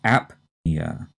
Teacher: here the stress is on the first syllable and we strongly say the p